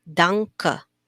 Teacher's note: your n is pronounced a little bit like an ng